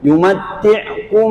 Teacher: Kemudian ilaihi yumatti'kum mim baris mati tidak ada tanda, ya, maka kita kena masukkan dalam huruf mim yang di hadapan itu. Maknanya kita dengungkan yumatti'kum, bawa bunyi ke hidung, dia adalah gunnah, dengung.